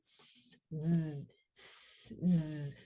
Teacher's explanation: when Z is produced, not only are the vocal folds vibrating, the teeth are vibrating. You can feel that kind of vibration of your teeth as you produce the Z sound. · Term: voiced S